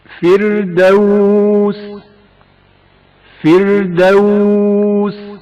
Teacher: فردوس فردوس، را سے پہلے زیر ہے جس کی وجہ سے را باریک پڑھا جائے گا۔ فردوس فردوس، را سے پہلے زیر ہے اس لیے را کو ترقیق کے ساتھ پڑھا جائے گا۔